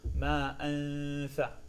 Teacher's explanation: The tha and the dal have the same exact location, so it will sound very similar.